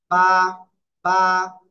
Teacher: দুই ঠোঁটের ভিজা অংশ থেকে এক আলিফ টেনে পড়তে হবে। বা, বা। দুই ঠোঁটের ভিজা অংশ থেকে বা, এক আলিফ টেনে পড়তে হবে।